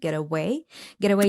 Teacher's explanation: the flap T in the word get away T is followed by vowel